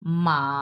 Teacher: আমার উচ্চারণটা উঠে যাচ্ছে এরপরে দেখি এটা হচ্ছে তিন নাম্বার টোন তিন নাম্বার টোনে আপনার মাঝখানে ঢেউ উঠবে